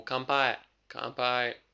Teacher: Again, N sound, P sound, the N would change into M.